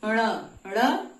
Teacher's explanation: दोनों की सहायता से म ग जो है क ख ग घ कंठ और नासिका दोनों से ण ण मूर्धा से है और नासिका दोनों की सहायता से